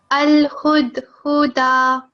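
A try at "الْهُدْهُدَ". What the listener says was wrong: Don't prolong this. It's only 1 second. Huda. Al-huda.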